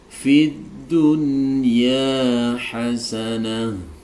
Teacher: Tapi karena ini nun sukun dan ya-nya itu berada dalam satu kata, maka ini masuk dalam kaidah idhar wajib. Jadi cara membacanya harus dijelaskan, tidak boleh didengungkan.